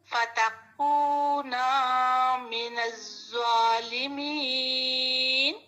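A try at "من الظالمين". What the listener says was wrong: من الزوا، زوا نہیں پڑھنا. میں نے بتایا تھا کہ زبان کی نوک سامنے والے دانتوں کے ایج پہ رکھنی ہے. من الظالمین. اس کو نرم پڑھتے ہیں. من الظالمین.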